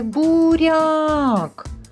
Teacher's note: у слові буряк буква я позначає один звук а і пом'якшує приголосний рі